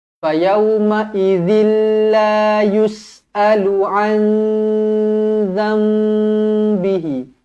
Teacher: tanwin tak selari bertemu dengan lam, idgham bila gunnah